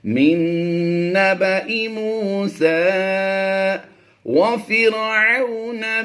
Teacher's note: من، اس نون کو ہم سائلنٹ کریں گے اور اس نون کی آواز دیں گے. نون مشدد میں ہمیشہ غنہ ہوتا ہے